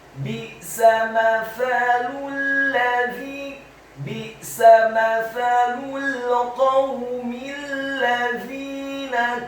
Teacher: Kata alladzina, huruf lamnya ditasydidkan, fathah 1 harokat. Huruf za-nya dibaca tipis, tarqiq, lidahnya agak keluar sedikit, kasrah 2 harokat karena setelahnya ada ya sukun. Dan huruf nunnya dibaca tipis, fathah 1 harokat.